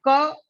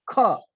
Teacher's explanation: यहां पर हकार की ध्वनि जहां आती है वो महाप्राण है, और जिन व्यंजनों में हकार अर्थात इंग्लिश में एच नहीं लगता है वो सारे अल्प प्राण हैं।